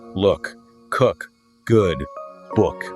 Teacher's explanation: native English speakers to understand it's all about that quickness right hitting that short U and releasing it instead of drawing it out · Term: short U sound